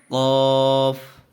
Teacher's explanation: منہ بھر کر کے پڑھیں گے، یہ بڑی قاف ہے